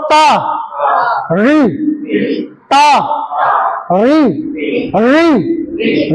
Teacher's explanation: ऋ का उच्चारण स्थान मूर्धा। जहां से ट मिलता है वहां से ऋता है।